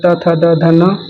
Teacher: दंत से त वर्ग आता है